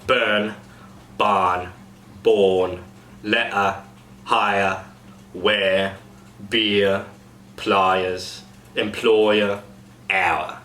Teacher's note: So the R sound is light or completely goes away when followed by a vowel.